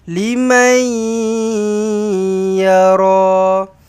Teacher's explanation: Nun kosong bertemu dengan ya. Idgham maal ghunnah